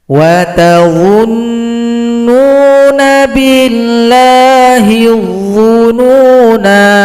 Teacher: Ini adalah sifir mustatil. Ketika kita berhenti, maka sifir mustatil tetap dipanjangkan 2 ketukan.